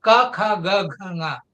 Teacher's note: first series ka kha ga gha nga, they are velar series